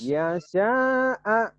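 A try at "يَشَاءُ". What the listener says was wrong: Tak ada yang panjang. Tapi sinnya gede, jangan sinnya nenek Rehan, jangan. Shin, ya sya'a.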